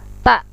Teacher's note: ujung lidah dengan pangkal gigi atas